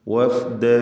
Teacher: വാവ് രണ്ട് ചുണ്ടുകളിൽ നിന്ന് തന്നെ വരണം. ഫ താഴെ ചുണ്ടും മേലെ മുൻപല്ലിൻ്റെ അറ്റവുമാണ്.